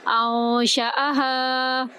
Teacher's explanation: ہا کو ہم 3 سے 5 الف کے برابر لمبا کریں گے